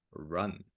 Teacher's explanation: tongue is kind of lifting up towards the back of your mouth.